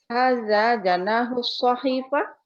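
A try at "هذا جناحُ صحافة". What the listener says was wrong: Bukan sahifah, sahafah. Hada janahu sahafah. Intonasinya salah, Ibu. Iya, betul.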